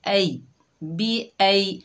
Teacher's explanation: हमज़ा के ऊपर ज़बर है, आगे या साकिन है, ये या लीन है, इसे नरमी और जल्दी से अदा करेंगे